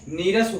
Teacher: जो लघु ई था वही दीर्घ ई हो गया